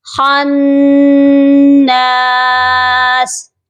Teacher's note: یہ غنہ ہارڈلی ہوگا، مینز کہ ہم نے اس کو سافٹ نہیں کرنا. نون کی جو آواز ہے وہ پراپر ادا ہوگی، یعنی ہماری زبان جب ہم نون کو ادا کرتے ہیں اوپر تالو کے ساتھ سختی سے چپکتی ہے